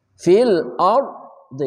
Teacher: ra-nya tafkhim tebal ardi ra mati sebelumnya fathah